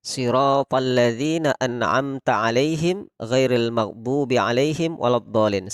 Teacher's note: kalau ada nun sukun bertemu ain pada contoh surat Al-Fatihah ayat 7 ini, maka kita membaca jelas. Tidak boleh kita dengungkan